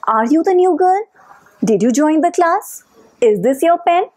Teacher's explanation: In all these questions, my voice is rising at the end of the sentence.